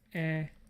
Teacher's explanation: I think we're dealing with vowel and then the velar nasal